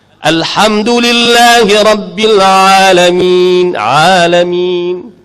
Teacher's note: Ain dengan ha keluar di pertengahan.